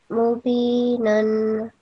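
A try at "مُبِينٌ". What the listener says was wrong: Yeah, so the last noon has the matain, two dhamma, or the meat. So it will be mubinun. Yeah, nun. So it will be dhamma, so a bit rounded way. Nun.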